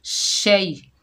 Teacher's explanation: शीन के ऊपर ज़बर, आगे या साकिन है, ये या लीन है, इसको नरमी और जल्दी से अदा करेंगे। शीन की आवाज़ फैलती हुई महसूस होती है।